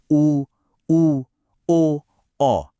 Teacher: पहले हैं वृत्ताकार। मतलब जब होठ एक सर्किल या वृत्त बनाते हैं गोल हो जाते हैं। जैसे उ ओ औ।